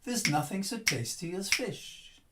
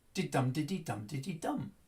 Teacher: So this is what English does. It gives the amount of time to the strong syllables, and then the weak syllables just fit in between.